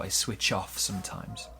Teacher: Also notice we link the ch and the o